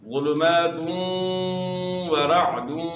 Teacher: اور اس کے بعد پھر تا کے اوپر 2 پیش کی تنوین ہے، اور 2 پیش کی تنوین کے بعد حروف یرملون میں سے واو ہے، تو یہاں ادغام مع الغنہ ہوگا